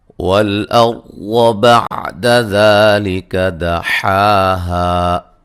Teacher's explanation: را کو موٹا ادا کریں گے، را ساکن سے پہلے زبر ہے